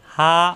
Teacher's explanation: হা মুখ খোলা থাকবে, হা কণ্ঠনালীর শুরু থেকে